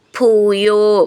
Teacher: ഭൂ എന്നുള്ള അക്ഷരം ഊന്നി പറയാനുള്ളതാണ്